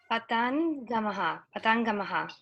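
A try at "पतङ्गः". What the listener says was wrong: Where is ma? Why ma sound is there? Patangaha. There is no ma.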